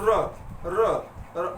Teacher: र मतलब आपकी जीभ थोड़ा लुंठित मतलब मुड़ करके आती है, तो ये लुंठित की श्रेणी में रखा गया है।